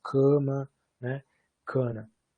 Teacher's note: uma nasal que está em outra sílaba, portanto, por isso heterossilábica, ela está contaminando a vogal da sílaba anterior. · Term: assimilação de nasalização